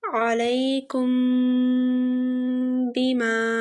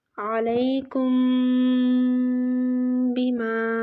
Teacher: یہاں پر میم ساکن کے بعد حرف با آ رہا ہے تو یہاں پر میم ساکن پر غنہ ہوگا، یعنی میم ساکن کی آواز کو ناک میں چھپا کر پڑھنا ہے، غنہ کرنا ہے میم ساکن پر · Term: اخفاء شفوی